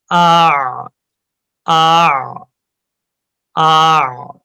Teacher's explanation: یہاں پہ پھر عین کو پرناؤنس کرنا ہے تھروٹ سے